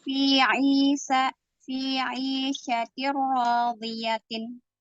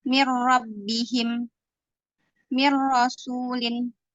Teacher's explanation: Idgham bila gunnah tanpa dengung. Dileburkan tanpa dengung.